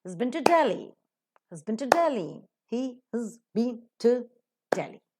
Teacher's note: All the words are reduced to their respective weak forms, excepting the word Delhi. Delhi being noun, that is to be stressed.